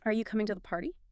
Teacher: Pitch goes up on party. Invites a yes or no.